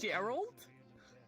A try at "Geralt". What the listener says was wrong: Well, it's got to keep the hard G.